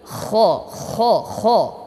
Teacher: Ho di tenggorokan tenggorokan yang paling dekat · kha di tenggorokan, ya, tenggorokan yang paling dekat ini. Kha, ya, ibarat orang yang sedang tertidur dalam keadaan mengorok.